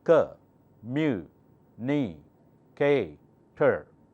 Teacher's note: mu is the loudest with the higher pitch